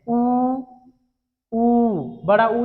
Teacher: हमारे होंठ है वो वृत्त के समान में बनते हैं